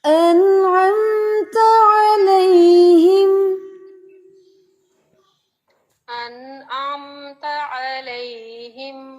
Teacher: جو عین ہے اس کو آپ نے میڈل پارٹ سے ادا کرنا ہے، گلے کے درمیان سے